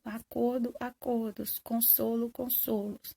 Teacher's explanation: Tem palavras que, quando vão para o plural, mantêm o timbre fechado.